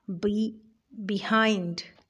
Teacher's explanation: the first syllable of this word behind b is unstressed and hind is stressed